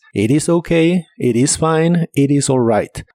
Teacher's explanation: La T de it también se suele pronunciar como R para mejor fluidez